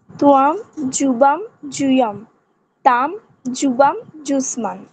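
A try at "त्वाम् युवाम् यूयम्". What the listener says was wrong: জ উচ্চারণ করছেন কেন? কি উচ্চারণ হবে, ঠিক করে বলুন। ঠিক, সংস্কৃতে জ মানে একটি জ, এটা হচ্ছে বর্গীয় জ, বাকি অন্তঃস্থ জ নেই, য় আছে, সেই জন্য ভালো করে উচ্চারণ করতে হবে।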